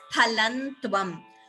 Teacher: Phalam tvam, again anuswara here, you could chant it as phalantvam.